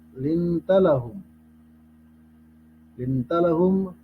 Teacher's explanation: Lintalahum, apabila nun sukun atau tanwin bertemu dengan huruf ta, hukum bacanya ikhfa hakiki. Kita samarkan bunyi huruf nun sukun itu ke huruf sesudahnya, itu huruf ta.